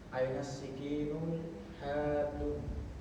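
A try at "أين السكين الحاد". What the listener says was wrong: Nah. Iya. Tanpa tanwin ya. Aina sikinul hadu.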